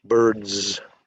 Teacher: Shoes, it's a voiced Z sound